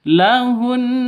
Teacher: cara berhentinya harus ditahan satu alif dua harakat